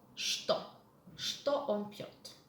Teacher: Mind the pronunciation of the word что. In some words in Russian language that are beginning with letter ch, which are followed with the letter t, the letter ch is pronounced as sh.